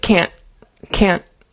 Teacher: Can't with the T on the end, instead of fully pronouncing the T, we normally stop the N sound. So the T is kind of like a hard stop instead of a real T sound.